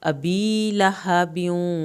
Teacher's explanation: अबी या साकिन की वजह से इसको पूरा खींचें, अबी लहबियूं, लहबियूं, ये हा अंदर से पढ़ा जाएगा, ब्यूं वाव की शद पे देर लगेगी।